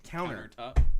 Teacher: How Northwest people pronounce a countertop is we don't enunciate the T.